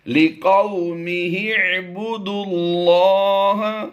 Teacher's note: याद रहे दाल को हमने डायरेक्ट लाम मुशद्दिद के साथ मिलाना है। ये वाव अलिफ और ये अलिफ और लाम चार हुरूफ बिल तरतीब जो हैं ये साइलेंट रहेंगे।